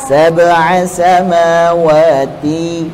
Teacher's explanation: T-nya tipis. Gunnahnya tebal. Tebal lagi.